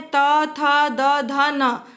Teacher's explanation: जब भी हम त, थ, द, ध, न पढ़ते हैं तब हमारी जीभ जो है वो दांत को जाके स्पर्श करती है